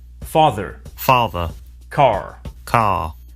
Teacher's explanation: Notice that the final R sound is not pronounced in British English. Father ends in a simple schwa vowel, like father.